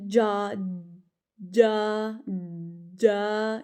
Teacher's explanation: آپ کی زبان چپک جاتی ہے اوپر تالو کے ساتھ، بالکل ٹائٹلی لگ جاتی ہے. جیم کا یہی مخرج ہے اصل میں، کہ جو زبان کا درمیان والا حصہ ہے نا وہ اوپر تالو کے ساتھ لگتا ہے، پراپر ٹچ کرتا ہے، تو نکلتا ہے پھر جیم. · زبان کا جو سینٹر والا حصہ ہے نا، وہ آپ کے اوپر کے تالو سے جب لگتا ہے نا تو اس سے ہمارا جیم ادا ہوتا ہے۔